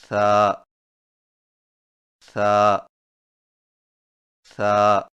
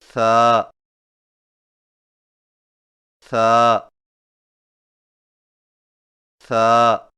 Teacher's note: ثا کی ادائیگی میں زبان کی نوک کو سامنے والے اوپر کے دو دانتوں کے اندرونی کناروں سے نرمی سے لگا کر باریک آواز میں پڑھیں، یعنی ثا ثا ثا۔